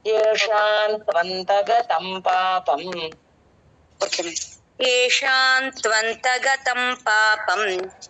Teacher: కాదు కాకపోతే అలవాటు చేసుకుంటే మంచిది ఎన్ ఏషాన్ త్వంత అంటే పెదాలు కలపకుండా ఎన్ అంటే ఏషాన్ అని చెప్పకూడదు పెదాలు కలపకుండా చెప్పాలి